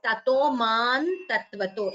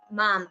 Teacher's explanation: So, here tato mam tatvato, you could combine the sandhi and chant it as tato man tatvato instead of mam.